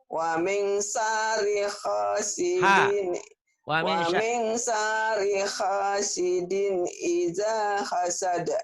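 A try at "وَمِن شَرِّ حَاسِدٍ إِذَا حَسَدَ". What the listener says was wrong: Di tasdidnya kurang nyambar sama shin-nya. Wa min syarriha. Wa min syarriha.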